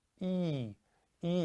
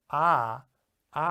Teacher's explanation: e happens in the front of the mouth behind the teeth but ah ah happens right at the back of the mouth